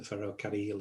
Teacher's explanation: It's a useful word to practice rolling your R's in, because it's got two double R's in the word, and you need to trill your R's.